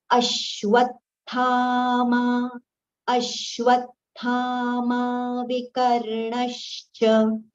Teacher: aghat on a and aghat on v. Both the aghats are prominent, so they should be heard clearly.